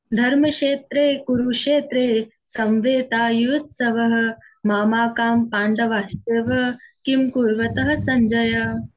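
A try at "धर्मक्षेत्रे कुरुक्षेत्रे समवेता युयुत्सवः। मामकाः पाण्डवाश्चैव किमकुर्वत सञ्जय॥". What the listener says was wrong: बेटा मामा कहा नहीं, धर्म क्षेत्रे कुरुक्षेत्रे समवेतायुयुत्सवः माम कहा, मामा कहानी, माम कहा पांडवश्चैव किम कुर्वत संजय। उच्चारण चाहे धीरे करें पर स्पष्ट करें, मेरा ऐसा निवेदन है।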